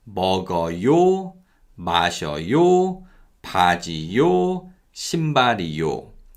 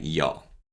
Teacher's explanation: So we never ever say 먹어요, 마셔요, 바지요, 신발이요. Yo actually weakens and sounds more like 여.